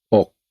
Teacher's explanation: because it's a dead sound and the first letter is a boy, it's a low, sad tone